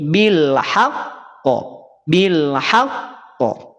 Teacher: jangan langsung dipantulkan tapi ditekan dulu baru dipantulkan tekan pantulkan tekan pantulkan tekan pantulkan maka di sini hukum qalqalahnya